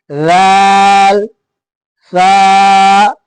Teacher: ऊपर के दांतों की नोक और जबान की नोक जब आपस में मिलेंगे तो ये अदा होंगे